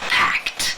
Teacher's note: the e d is also pronounced as an unvoiced consonant and that is the T sound